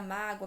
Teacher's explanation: primeiro eu tenho a semivogal O, depois a vogal A. Também um ditongo crescente e oral.